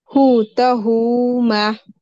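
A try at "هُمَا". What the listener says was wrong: ये हाँ को नहीं खींचना, जल्दी पढ़। हुमा।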